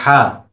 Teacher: হাটা হলো হলকের মাঝখান অথবা কণ্ঠনালীর মাঝখান। হলক হলো আরবি শব্দ, বাংলাতে আমরা এটাকে বলি কণ্ঠনালী।